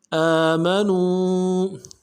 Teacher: حمزہ کے اوپر کھڑا زبر ہے، ایک الف دال میں کھینچیں گے. میم کو نرم سے ادا کریں گے.